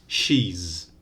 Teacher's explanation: She ends in a vowel. All vowels are voiced. So with the final S, she's, also voiced.